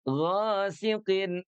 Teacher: Huruf gnya pastikan dia dibaca menebal karena memiliki sifat isti'la ya